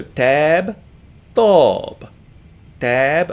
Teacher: don't make the puff of air when you say either letter